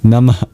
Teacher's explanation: Finally, at the end of Namah is a mini exhale, symbolized by an H with a dot under it, or these two dots you see in the Devanagari. It's known as a Visarga, an expulsion of breath.